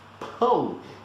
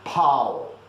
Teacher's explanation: if you don't nasalize pão, you're gonna say pau